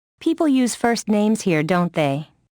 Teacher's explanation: Falling intonation usually indicates that the speaker expects the listener to agree.